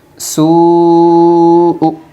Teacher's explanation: حروف مدہ کے بعد حمزہ اسی کلمے میں ہے اس لیے مد متصل ہوگا۔ مد متصل کو 3 الف کی مقدار کھینچ کر پڑھے گی